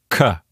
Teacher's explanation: When you say the letter K, you close off the back of the mouth, the air builds up for a second, K, and then you release it and you get a K sound, okay? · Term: stop